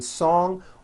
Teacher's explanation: song ends with a voiced NG sound